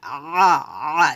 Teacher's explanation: আইনটা কিন্তু চাপ দিয়ে বলতে হবে গলার মাঝখান থেকে